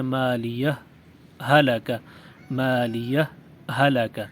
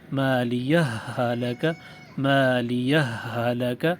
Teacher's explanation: صرف ایک مشدد ہا سے پڑھیں · دو الگ الگ ہاؤں سے پڑھیں، لیکن پہلی ہا پر معمولی سے رک کر پڑھیں،